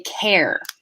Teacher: most british accents don't actually have that r sound at the end there